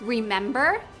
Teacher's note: In the verb remember, the E before the consonant R at the end of the word is not stressed.